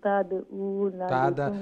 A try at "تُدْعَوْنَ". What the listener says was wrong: তুদ তারুফ রে পেশ তুদউনা